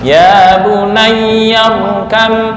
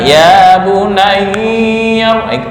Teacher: ya yang bertasydid jangan ditekan lama-lama ya. Ya bunayya kam, bukan ya bunayya, kelamaan.